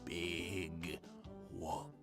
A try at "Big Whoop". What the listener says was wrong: I feel like if you're saying big whoop, you have to say, like, big whoop. Say it excitedly.